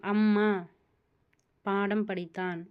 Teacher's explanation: மகர எழுத்து தனக்குரிய மாத்திரை அளவில் முழுமையாக ஒலிக்கிறது